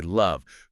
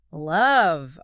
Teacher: And say love. Feel the buzz. That's voice V.